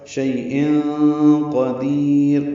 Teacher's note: کلی کاف لام باریک ہیں، شیء یا لین ہے، نرمی سے ادا کریں گے، تنوین کے بعد قاف آنے کی وجہ سے اخفا ہوگا